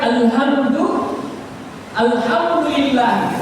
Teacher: Ha huruf tengah leher alham ha huruf ha. Huruf ha itu adalah huruf di tengah leher namanya.